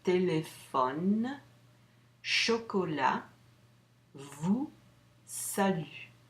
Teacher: I don't pronounce the S and T's at the end of the word. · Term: final consonants